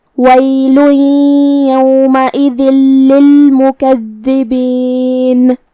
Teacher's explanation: پھر کلمت یومئذ کے آخری میں حرف الدال ہے، دال کو ہم زبان کی سر اور اوپر والے دانتوں کے اندرونی کناروں سے ادا کریں گے